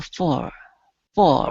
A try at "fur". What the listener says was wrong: almost almost so let's let's get you to that vowel